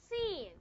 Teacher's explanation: Your nasal cavity is going to be open when you pronounce the vowel E.